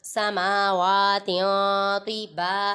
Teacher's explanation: یہاں پر تا پر اخفا ہو رہا ہے کیونکہ تنوین کے بعد حروف اخفا میں سے تو ہے، ادھر غنہ کر کے پڑھیں گے